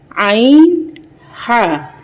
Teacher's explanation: आइन, हा, यानी कि ये वसतुल हलक, यानी कि हलक का दरमियानी हिस्सा, यानी कि नेक का हमारा जो मिड पार्ट होता है, ये वहाँ से निकलता है